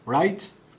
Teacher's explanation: a backed and lowered price token